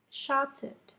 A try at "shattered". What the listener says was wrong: You're saying shouted. You're saying show. Shattered.